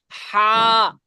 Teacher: গলার ঠিক মাঝখান, কণ্ঠনালীর ঠিক মাঝখানে